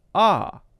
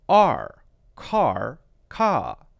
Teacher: Singaporean or British pronunciation would be ah. Americans would say R, car, ka.